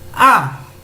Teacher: el tono 4 es como una bajada a como que fue hacia abajo el tono de mi voz